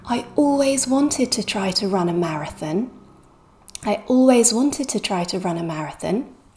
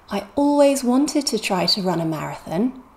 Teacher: so we stress it and we stress the stress syllable want try and run are main verbs and they're one syllable so the whole thing is stressed